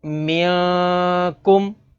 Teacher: میم نون زیر من، کاف میم پیش کم، منکم۔ اس میں ناظرین نون ساکن کے بعد کاف ہے، کاف حروف اخفا میں سے ہے، تو یہاں پر اخفا یعنی غنہ کر کے پڑھیں گے